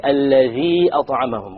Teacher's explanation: It is a separated mad, al-mad al-munfasil. So we have the option of doing it 2, 4 or 5.